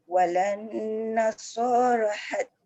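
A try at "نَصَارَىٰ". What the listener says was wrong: Nasoro 2 harakat. Walan nasara hatta dia tak boleh. Bonda so dengan ra tu sama level. So tebal, ra tafkhim juga. Nasoro, dia jangan nasara.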